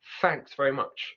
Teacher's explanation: If that was a Cockney accent, she would have said thanks with an F sound.